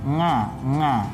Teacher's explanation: dari tenggorokan maka tidak tepat Hai seperti kita mengucapkan ngah ngah ini tidak keluar dari tengah tenggorokan tapi dari hidung atau kalium pangkal hidung itu pokok ilmu tajwid yang kedua yang